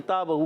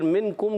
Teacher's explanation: یہ ہم نے باریک پڑھنا ہے، اس کا مخرج زبان کی جڑ تالو کا سخت حصہ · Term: کتاب والا کاف